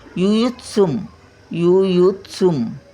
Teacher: अनुस्वराचा उच्चार म्हणजे म